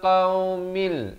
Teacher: idgham bila gunnah daripada qaumin jadi qaumil di sini masuk tanpa dengung